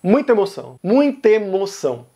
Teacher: a gente junta o final da palavra muita com o começo da palavra emoção. Tem a vogal A no final de muita, a vogal E no começo de emoção.